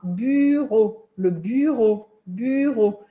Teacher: o som da letra U sozinha em francês é esse U com biquinho